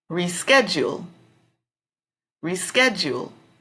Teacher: The strong syllable would be in the middle on sched, reschedule.